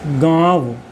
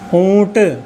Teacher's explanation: श्वास वायु नाक सहित मुख से बाहर आती है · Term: अनुनासिक